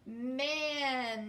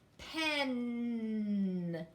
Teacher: Let's say it and hold the N long.